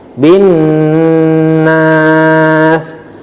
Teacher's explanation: bacaan gunnah harus ditahan suara lebih kurang sekitar dua ketukan